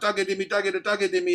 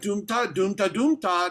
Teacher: now all of a sudden doom is low, ta is high. You're starting to see a little bit more contour.